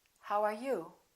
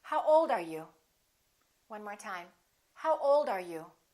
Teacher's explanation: wh questions have falling intonation